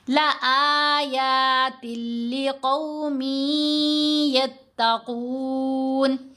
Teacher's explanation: اگر ہم پڑھیں گے لَآيَاتٍ لی، تل کی آواز کو اگر لمبا کریں تو یہ غلطی ہو جاتی ہے تجوید کے لحاظ سے۔ لام کے اوپر جب ادغام کرنا ہے تو غنہ نہیں ہوگا، جلدی پڑھیں گے لَآيَاتٍ لِقَوْمٍ يَتَّقُونَ۔